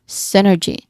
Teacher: Now the primary stress here is on the first syllable sin.